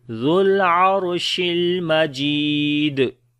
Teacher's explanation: Jim we long due to ya madda. On the dal we make qalqala.